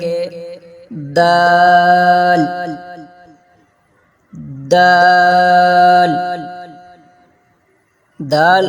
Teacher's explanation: ادا کرتے وقت زبان کی نوک جب سامنے کے دو دانتوں کی جڑ سے لگے تو دال ادا ہوتا ہے